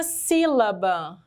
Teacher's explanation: palavrinha sílaba é uma palavra trissílaba nós temos três sílabas e ela também uma palavra proparoxítona porque a antepenúltima é a mais forte